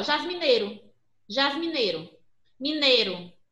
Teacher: O I, eu sei que ele está presente na palavra, mas eu pouco pronuncio. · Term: o mais fraco